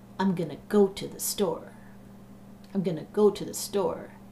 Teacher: you can hear go and store really pop out those are the stressed words in that sentence and the other words well we do all kinds of craziness